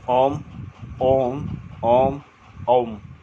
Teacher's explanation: प्लुत स्वर का उच्चारण दीर्घ से अधिक समय तक होता है।